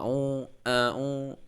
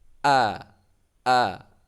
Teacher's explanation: Hamzah itu keluarnya ditenggorokan paling bawah